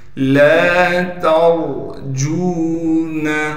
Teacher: لام کے بعد الف مدہ ہونے کی وجہ سے لام کو ایک الف کے مقدار کھینچیں گے